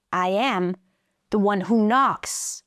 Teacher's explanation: It's kind of like he raises his pitch and drops it.